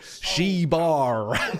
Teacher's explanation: the emphasis is on the bar